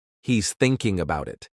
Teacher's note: thinking is stressed because it's the main action